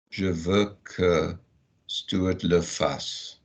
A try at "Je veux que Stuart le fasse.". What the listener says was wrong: Go all the way through because it's not joined up.